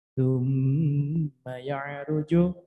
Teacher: Mim bertasdid, menahan huruf mim disertai dengung sekurang-kurangnya 2 harokat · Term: gunna